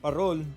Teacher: parol pronounced with a rolling r